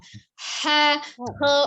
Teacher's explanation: Jadi nanti belajar untuk menahan bibirnya, dibuka mulutnya tetap ya untuk kho. Jadi huruf kho itu tidak dengan memonyongkan bibir, tapi dengan mengangkat pangkal lidah